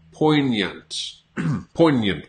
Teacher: So it's almost like you don't pronounce the G. You don't pronounce the G, and then you almost have a Y sound after that. Poignant. Poignant, but it's a schwa after that.